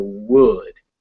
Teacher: So it's basically it's as if there was no letter there, but you start with your lips almost closed. So would, and then you open them.